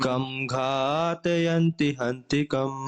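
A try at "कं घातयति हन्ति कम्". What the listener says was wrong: It's not ghatayanti. Ghatayanti will become plural ghatayati. Kam ghatayati hantikam.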